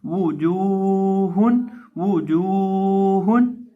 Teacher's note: जीम को एक अलिफ के बराबर लंबा करके पढ़ेंगे, क्योंकि जीम के साथ वाव मद्दा है, वाव साकिन है, वाव साकिन से पहले पेश है, इसलिए हम जीम को यहाँ एक अलिफ के बराबर लंबा करके पढ़ेंगे।